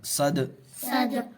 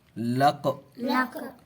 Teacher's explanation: قلقلہ میں سے دال آ گیا اور اس پر جزم ہے، اس لیے قلقلہ ہوگا